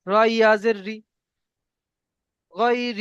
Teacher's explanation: ইয়া মাদ্দাকে একালিক পরিমাণ টান দিয়ে পড়তে হয়।